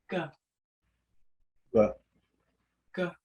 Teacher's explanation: bringing the back of the dorsum up to that uh velum and then releasing it down